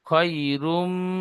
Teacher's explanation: ইয়া লিন নরম আওয়াজে তাড়াতাড়ি পড়তে হয়, টান দেওয়া নিষেধ